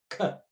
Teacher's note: It's the soft palate up against the back of the tongue. K. They just have this little plosive moment there, and so it's a glottal plosive consonant.